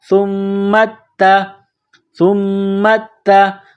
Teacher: میم میں آواز ناک میں چھپائیں گے، غنہ کریں گے، میم کو تا کے ساتھ ملانا ہے.